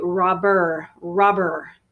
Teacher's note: the pronunciation is actually first syllable stress